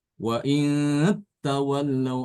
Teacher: Ada penekanan ke ta ya. Wa Taw. in tawallau.